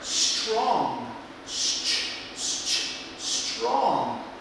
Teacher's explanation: TR becomes like the CH sound